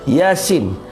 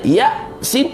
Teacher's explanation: Yasin panjang sin tu panjang, ya tu pendek. Kalau orang tanya ya sin, salah lah.